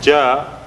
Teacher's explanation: ja by itself is 2 haraka long because we have alif preceded by fatha and there is nothing after